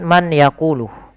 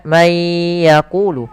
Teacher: Karena dia bertemu dengan ya. Suara nunnya hilang, suara n-nya hilang, maka menjadi langsung ke ya. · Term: idgam